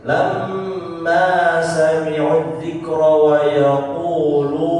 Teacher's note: Kalau berhenti, lunnya dipanjangin lebih dari 2 harokat.